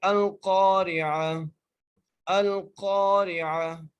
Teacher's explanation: وقف کی صورت میں تا کو ہاں میں چینج کر دینا ہے۔ جیسے یہ شیپ لکھی ہوئی ہے نا تا کے، اس کو ہم نے ہاں میں چینج کر دینا ہے، ٹھیک ہے۔